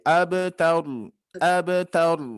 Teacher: Jadi harus kita pantulkan. Ab, huruf ba ketika sukun qalqalahnya ringan ya. Tidak ab, taur, ab itu terlalu berat. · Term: huruf qalqalah